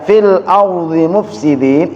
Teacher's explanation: Mad arid lis sukun karena di akhir, mad tabi'i yang di akhir